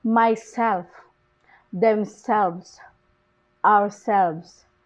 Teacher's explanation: and in reflexive pronouns the stress is usually on the second syllable